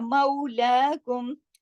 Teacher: वावे लीन में आवाज में नरमी के साथ मोड़ पैदा होता है, और वावे लीन की पहचान देखिए, वाव खुद साकिन और उससे पहले जबर, ये वावे लीन है।